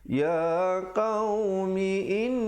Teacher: wajib al-qunnah di situ didengungkan dua harakat